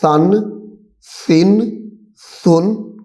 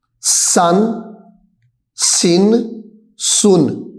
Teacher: سا کے اندر سیٹی نہیں تو سیٹی نہیں نکالنی